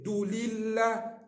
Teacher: Li lam kasrah nipih. Jangan baca tebal.